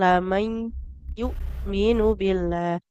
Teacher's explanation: Hamzahnya tekan betul-betul aliran suaranya tertahan. Jangan jadi muka ain lam yu billah lamai.